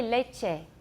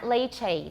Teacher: the spanish word for milk because that one is a monophthong it sounds like english a but it's not a diphthong it's just a pure monophthong